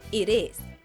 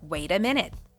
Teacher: Americans often don't pronounce the letter T in phrases such as it is as a hard T. When it's between two vowels, it becomes soft, almost like a D sound, so it sounds like it is. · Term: flap T